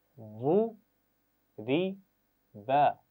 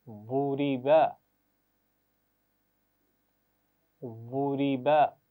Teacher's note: دیکھیے 3 آوازیں ہیں اور اس کا خیال رکھنا ہے. واد کو موٹا پڑھنا ہے اور را کے نیچے زیر ہے، کیسے پڑھیں گے؟ باریک پڑھیں گے.